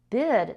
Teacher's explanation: the I is still a short I but D is voiced. So the it becomes longer because before a voiced sound a vowel gets longer.